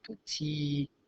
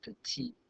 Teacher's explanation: you don't pronounce that final consonant on the masculine forms, but you do on the feminine form, but you don't pronounce the E.